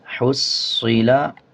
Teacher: صاد کو جب پڑھتے ہیں تو اس کو موٹا کر کے پڑھتے ہیں